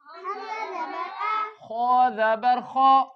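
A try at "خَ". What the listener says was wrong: खो ज़बर खो, खो ज़बर खो,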